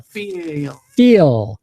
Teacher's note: It's like this long E sound. Feel. We want to stretch that vowel sound out longer.